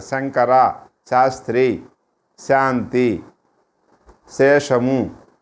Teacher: శా అంటే తాళవ్యం. ఇలా దవడ సహాయంతో శా అని పలకాలి.